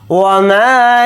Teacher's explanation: وما، واو کو جلدی پڑھیں گے، میم کے ساتھ الف مدہ ہے، میم الف زبر ما کو تھوڑا کھینچ کر پڑھیں گے